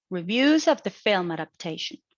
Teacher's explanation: in the first IP, it is a falling tone. It is a falling intonation because it is a neutral tone. It is presenting what it's going to be the rest of the information.